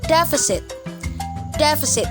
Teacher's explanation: Meron na naman po tayong schwa sound dyan sa second and third syllables